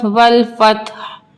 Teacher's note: वफ की सूरत में ह की साउंड आनी चाहिए।